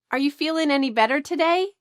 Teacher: the G at the end of ing feeling, is cut off